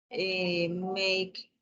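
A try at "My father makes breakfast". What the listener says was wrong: acuérdate de hacer el énfasis cuando tiene la S en la S. Makes. My father makes breakfast.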